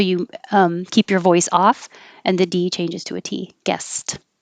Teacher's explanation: it sounds like a t because the s at the end of the word of guess is voiceless so you um keep your voice off and the d changes to a t